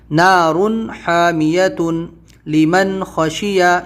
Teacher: نون ساکن ہے تو نون کی آواز کو ظاہر کرنا ہے کیونکہ اس کے بعد میں حلقی لیٹر ہے، خا ہے، خا حلقی لیٹر ہے۔